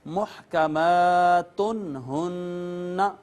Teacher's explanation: حروف اظہار میں سے ہا آ گئی، اس کو اب نون تنوین کو بغیر آواز چھپائے فقط ظاہر کریں گے